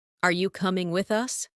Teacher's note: Rising tone for question.